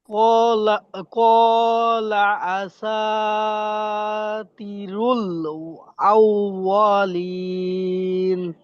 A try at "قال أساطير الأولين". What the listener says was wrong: হ্যাঁ, তাড়াহুড়া করা যাবে না। দেখেন আসা ঠিক আছে, কলা ঠিক আছে, তয়াজের তি এটাও তো মধ্যে হরফ তাকলিফ টান হবে, এটা এটা তো টান হয় না, বুঝতে পারছেন ভাই? টান কম হয়ে গেছে। قال أساطير الأولين